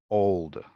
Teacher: it goes back like blocking the airflow and then it says the back of the tongue rises so back and up uh final l as a swallowed sound · the tip of the tongue touches behind the top teeth the body of the tongue bunches up and the back of the mouth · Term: dark l